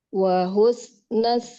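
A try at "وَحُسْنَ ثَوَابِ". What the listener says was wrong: nunnya nggak panjang. Wahusna sawabil.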